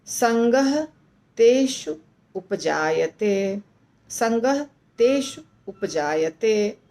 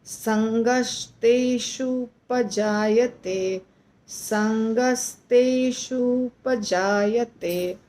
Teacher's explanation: तो जब हम इसका संधि करते हैं तो तेषु और उपजायते ये दोनों जुड़ेगा, इसीलिए एक होगा तेषु का छोटा ऊ और एक होगा उपजायते का छोटा ऊ, यानी दो ऊ है और दोनों ऊ को जब जोड़ते हैं तो बन जाता है बड़ा ऊ, तेषु, तेषु पजायते। और संगह और तेषु के बीच में विसर्ग हटेगा, विसर्ग हट जाएगा और आधा स चलाएगा